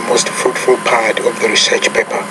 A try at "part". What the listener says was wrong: And take that word, it's not pot, but part. You pronounce that R. Again, however, So one of your pronunciation weaknesses you want to work on right now is the R. When the R is in the middle or near the end of the word, you have a tendency to not pronounce that.